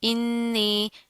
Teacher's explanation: नून के ऊपर तशदीद करेंगे, गुन्ना करेंगे, मद्दा खींच कर लंबा करके पढ़ेंगे